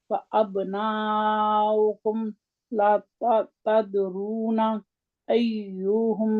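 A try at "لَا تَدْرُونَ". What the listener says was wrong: ला को लंबा करते हैं, ला तदरून।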